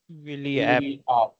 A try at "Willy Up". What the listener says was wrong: it's not app. It's not app like in English, but it's Willy Up.